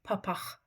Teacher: Yəni burda məndə bu q hərf olaraq qalır, amma səs olaraq q olmur, x olur.